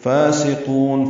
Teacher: اظہار شفوی ہے، فاسقون، فا کو دو حرکات لمبا کرنا ہے، سین صفیر کی آواز سے ادا کریں گے